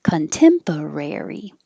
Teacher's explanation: Rare is your secondary stress, so it gets longer.